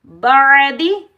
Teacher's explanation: आइन को हलक के दरमियान से अदा करेंगे